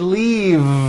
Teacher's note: I should have said leave with a voiced V sound